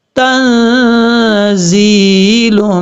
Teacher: اب یہاں پر زا کو سیری کے ساتھ پڑھا جائے گا، زا کے بعد جو یا ہے یہ یا مدہ ہے، یہ ایک الف کی مقدار اس کو لمبا کریں گے